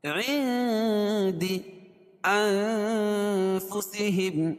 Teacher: عندی اخفاء حقیقی، کیونکہ نون ساکن کے بعد حروف اخفاء کے 15 حرفوں میں سے دال ہے، تو یہاں ناک میں آواز کو چھپا کر پڑھیں گے